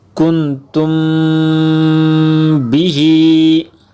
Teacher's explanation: मीम साकिन है, उसके बाद बा आ गया, तो यहाँ पर इख्फाए शफवी यानी गुन्ना करके इसको पढ़ेंगे